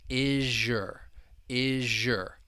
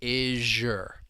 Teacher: we have that z sound in is and the beginning y sound in your. It can blend together and you get a sound like in the word pleasure. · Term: assimilation